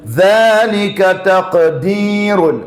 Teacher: തഖ് ഖുതുബജദിൽപ്പെട്ടതാണ്, ഖൽഖലയുണ്ട്, full സുകൂൻ